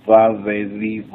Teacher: la b más vibrante que en español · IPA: /v/